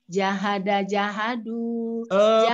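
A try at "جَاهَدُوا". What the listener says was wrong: Panjang pendeknya diperbagus. Jahadu. Okay. Jahnya itu panjang.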